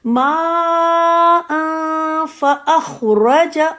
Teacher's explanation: را کو موٹا رکھیں گی، را پہ زبر ہے